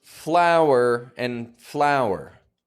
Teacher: Same sound, because even though for that F-L-O-U-R, there's no W in it, we still make a clear W sound